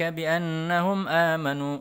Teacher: ini ada Nun tasydid dibaca dengung